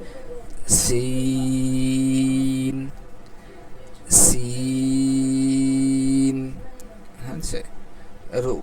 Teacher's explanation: জিবার আগা সামনে নিচের দুই দাঁতের পেট ও আগার সঙ্গে লাগাইয়া